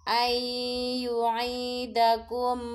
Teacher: nun sukun bertemu huruf ya disebut bacaan idgham bi gunnah melebur disertai dengung